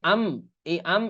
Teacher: নুন সেকেন্ডের পরে বা আসলে ইকলাব হয়ে যায়, অর্থাৎ ওই নুনটা মিমে উচ্চারণ হয়